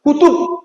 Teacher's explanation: আমি কিন্তু বয়ের অর্ধেক উচ্চারণ করছি